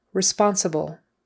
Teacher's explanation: um I'm a very responsible person responsible that's really quick and the L at the end just a quick touching of the tongue to the upper teeth